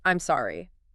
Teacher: So, if you drop your phone, you say, I'm sorry. with a flat falling tone. You're admitting a mistake.